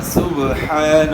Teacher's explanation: قلقلہ ہوگا، سبحان پڑھنا ہے، صبح، ایک تو پیش کو معروف پڑھنا ہے، پیش کی ادائیگی میں ہون بولو گے، سبحان، ہا کے اوپر کھڑا زبر ہے، ہا کو تھوڑا کھینچنا ہے اور با میں قلقلہ کرنا ہے